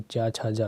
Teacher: तो चा वर्ग आपका स्पर्श संघर्षी होता है